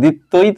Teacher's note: শব্দের শেষে ত এর সাথে ব ফলা আছে না, এই জন্য তটা এখানে দুইবার উচ্চারিত হয়েছে, দ্বিত্ব। এরকম যেখানেই তোমরা দেখবা শব্দের মাঝে এবং শেষে ব ফলা আছে, এটা দুইবার উচ্চারণ করবেন বা করবা।